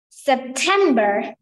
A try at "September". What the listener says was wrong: Perfect. But no R will be pronounced in British English.